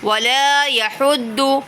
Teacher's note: بہتر سے مراد یہ ہے کہ گول والا ہاں نہیں ہے، ٹھنڈا والا ہا ہے، یہ اس کو باریک طریقے سے ادا کریں گے۔ یحد، ضاد کو پر پڑھیں گے، ہا کو باریک پڑھیں گے۔